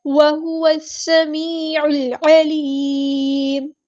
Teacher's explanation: وَهُوَ السَّمِيعُ الْعَلِيمُ ہاں ہم صفت ادا کریں گے، واو کو سین کے ساتھ ملا دیں گے، حمزۃ الوصل ہمارا ڈراپ ہو جائے گا. لام یہاں پر لام شمسیہ ہے، سین کی سیٹی واضح کریں گے، سمی نہیں پڑھنا، سمی.